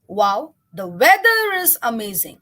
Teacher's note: the emphasis on the word weather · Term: word stress